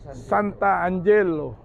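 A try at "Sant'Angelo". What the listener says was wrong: San Angelo. Santa sama Angelo kan A-nya 2 jadiin 1. San Angelo. Ada komanya itu. Santa, San.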